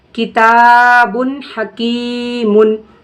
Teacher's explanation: حروف حلقی تنوین یا نون ساکن کے بعد حروف حلقی میں سے کوئی حرف اگر آ رہا ہے تو ہم نون کی آواز کو ظاہر کر کے جلدی پڑھیں گے بغیر غنہ کے